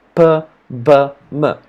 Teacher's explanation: when we stopped the air of the lips that's when we make a bilabial sound